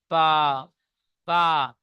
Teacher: এই দুই ঠোঁটের নিচে উপরে দুই ঠোঁটের ভিজা অংশ মিলিত হয়ে একত্রিত হয়ে উচ্চারিত হয় বা।